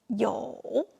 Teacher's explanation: When 友 is pronounced by itself, it uses third tone, 友. But when it is part of a 朋 友, it is pronounced with a neutral tone.